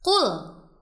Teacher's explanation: huruf lam sukun yang tidak boleh dibaca memantul karena bukan termasuk huruf qalqalah. Jadi bunyinya qul.